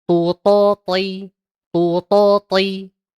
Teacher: Sama dengan kita nyebutkan ta, hanya saja kalau huruf to vokalnya o, kemudian ketika diucapkan dia mengangkat pangkal lidahnya beserta dengan tengahnya